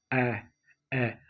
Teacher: आता है मध्यम स्वर जिन स्वरों के उच्चारण में मध्या का जिव्या का मध्य भाग सक्रिय रहता है उसे मध्य स्वर कहते हैं · जिन स्वरों के उच्चारण में जिह्वा का मध्य भाग सक्रिय रहता है उसे मध्य स्वर कहते हैं। जैसे ए। अब आप देख पा रहे होंगे आपकी जीभ का अगला हिस्सा नहीं उठ रहा है बल्कि मध्य से ही इसका उच्चारण हो पा रहा है।